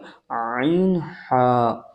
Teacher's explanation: হালাক বা কন্ঠনালীর মাঝখান হইতে উচ্চারণ হয় আইন হা